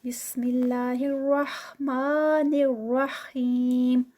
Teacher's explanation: इसको हम रहमा और रहीम करके तो उनको दबा देते हैं, तो इसको बहुत अच्छे तरीके से हा जो है वो प्रोमिनेंट अदा करना है। बिस्मिल्लाहिर्रहमानिर्रहीम, रहमा, मा जो है दरमियान में ये 2 काउंट्स का। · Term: हा साउंड